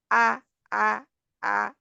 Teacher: جب حمزہ کے اوپر جزم لگائیں گے تو آ آ آ، آواز بالکل رک گئی